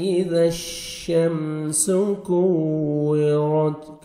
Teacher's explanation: شمس سین کو سیٹی کے ساتھ ادا کرنا ہے